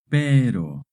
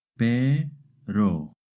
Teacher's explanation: when the R is between two vowels, it makes a short tap R sound